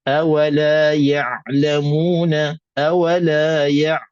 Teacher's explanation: harful Ain mesti nak kena keluarkan di makhrajnya dan di tengah-tengah halquum